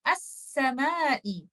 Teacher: پڑھنے میں ہم حمزۃ الوصل کو سین سے ملا رہے ہیں